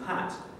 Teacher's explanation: we hold onto the vocal fold vibration a bit longer, so we get some aspiration in pat